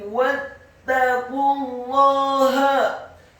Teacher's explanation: Wattaqullaha, wawunya dibaca fathah 1 harokat, kemudian taknya ditasydidkan, watta ditarik